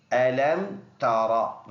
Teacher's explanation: ألم تر، یہ راپور ہے، زبر ہونے کی وجہ سے یہ راپور ادا کریں گے